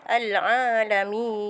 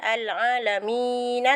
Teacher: Dia jadi mad asli 2 harakat. Tapi kalau kita berhenti ataupun wakaf, dia akan jadi mad arid sukun. Harakatnya adalah 6 harakat.